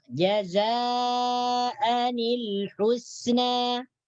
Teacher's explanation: apabila bertemu dengan alif wasal, maka nun mati tersebut dibariskan kasrah atau bawah menjadi jazaanil husna